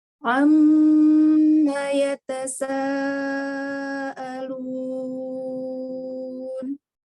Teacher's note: Tambahkan lagi panjang mad wajibnya 4 sampai 5 harokat, minimal 4 harokat